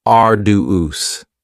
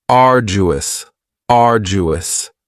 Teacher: And arduous has three syllables. And the stress is on the first syllable. Ardu. Now you don't hear that d sound that much.